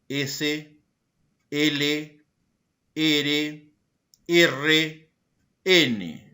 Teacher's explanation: Tenemos los alveolares. Se producen con desplazamiento del ápice de la lengua hacia la zona alveolar